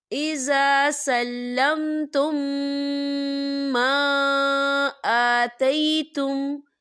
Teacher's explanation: میم ساکن ہے اور میم ساکن کے بعد پھر میم آ رہا ہے تو یہاں پر ادغام شفوی ہو رہا ہے تو ہم یہاں غنہ کریں گے